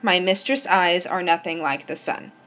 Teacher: it alternates between unstressed and stressed for every syllable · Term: iambic pentameter